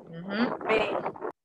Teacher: Con los dos labios. Y por eso decimos que es bilabial.